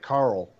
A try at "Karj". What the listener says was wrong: No. That's a J, yeah.